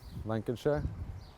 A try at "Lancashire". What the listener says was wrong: Lancashire. Lanka. Just Lanka. Lancashire. Don't say Shire.